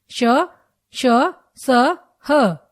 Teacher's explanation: इन व्यंजनों का उच्चारण करते समय वायु तेज गति से मुंह से रगड़ खाती है तथा ऊष्मा पैदा करती है इसलिए इन्हें ऊष्म व्यंजन कहा जाता है यह चार होते हैं